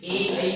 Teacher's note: ये दो वर्ण है हमारे ए और ऐ, इनके उच्चारण स्थान भी दो है, कंठ और तालु। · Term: कंठ तालु